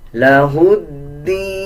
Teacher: کو یوں پڑھا جائے گا إِلَّا لِيَعْبُدُوا اللَّهَ مُخْلِصِينَ لَهُ الدِّينَ، ہا کو دال کے ساتھ ملا کے پڑھا جائے گا، دال سے پہلے یہ لام اور الف ہے، ان دونوں کو سکپ کر دیا جائے گا